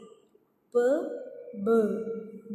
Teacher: So bird, there is vibration. So that's why it is voiced sounds.